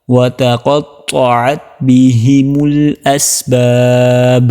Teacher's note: تا باریک اور طا موٹا، وتقطعت بهم الاسباب، یہاں پر کلکل کی آواز آنی چاہیے۔